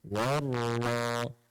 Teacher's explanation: Waw nipis, kemudian masuk ke dalam ra, syaddah dan baris atas tebal.